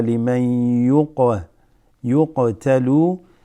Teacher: Liman, noon sakina mixes with the ya.